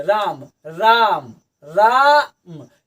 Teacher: रा के बाद लंबा सांस ले रहे हैं, उसके बाद फिर हम म कर रहे हैं। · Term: प्लुत स्वर